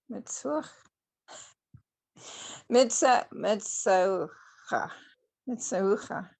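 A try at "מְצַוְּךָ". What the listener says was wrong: It's a vav.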